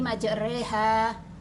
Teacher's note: Fatah dibaca pertengahan antara Fatah dan kasrah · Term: imalah